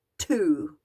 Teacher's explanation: So for example, if you're singing to, T-O, then the T is unvoiced and you only make sound when you get to the O